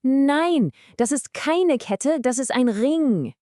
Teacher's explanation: You really want to punch that negative word, keine, and punch the correct object, ring. Say it with absolute confidence. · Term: sentence stress